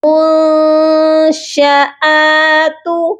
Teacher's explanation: منشآت، یہاں پر دیکھیے نون ساکن ہے اور اس کے بعد شین ہے جو کہ حروف اخفا ہے، یہاں پر بھی ہم نون پر اپنی آواز کو ناک میں چھپا کر پڑھیں گے